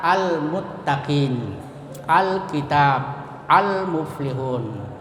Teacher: Cara membacanya harus dijelaskan. Jadi lamnya itu harus dijelaskan atau diizharkan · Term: izhar kamariyah